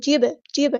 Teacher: جب اس طرح آواز پلٹتی ہوئی محسوس ہونی چاہیے، آواز میں ایکو آنی چاہیے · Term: کلکلا